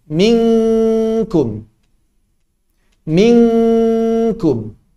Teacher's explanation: Yang paling mirip dengan bahasa Indonesia mungkin nun bertemu dengan kaf. Ini sangat menyerupai suara eng. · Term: ikhfa